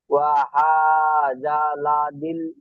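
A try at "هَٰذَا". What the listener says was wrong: হা জালা হয়ে যাচ্ছে, হা জালা হয়ে যাচ্ছে, হা জাল।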